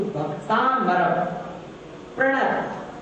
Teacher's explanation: दोनों ह्रस्व आ मिलके एक दीर्घ आ बन जाता है